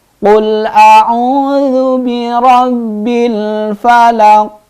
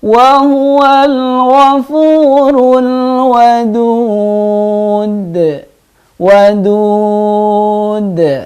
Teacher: qalqalah kubra memantulnya dengan jelas atau dengan keras